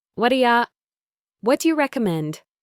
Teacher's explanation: the t in what becomes a soft d sound. The do becomes a d sound and u becomes y.